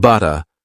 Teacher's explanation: Words like butter become butta, with a gentle T sound instead of a hard D sound.